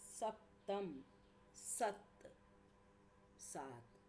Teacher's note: द्वित्व व्यंजन के स्थान पर एक का लोप हो जाता है और दूसरा जो पूर्ववर्ती अक्षर है वो दीर्घ हो जाता है